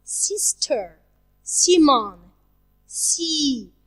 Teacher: And the third column, it's s sound, sister, Simon, see. The sound s is voiceless.